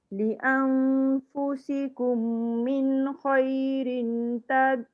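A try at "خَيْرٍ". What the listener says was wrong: khairin, tak jejak lidahnya. Khairin tengah-tengah.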